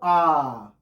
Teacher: आप बोल के देख लीजिए, अ, ई छोटा हो रहा है, लेकिन जब आपको आ, तो आ ही एकमात्र स्वर है जिसको बोलने पर मुख का जो द्वार है, मुख विवर, मुख विवर, और ये मुंह का जो द्वार है ये पूरा खुल जाए, इसको बोलते हैं आ, यानी विवृत स्वर